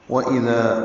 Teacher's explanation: واو ہونٹ کی گلائی سے، اذا حمزہ جلدی سے، دال نرمی سے، الف مدہ ہے.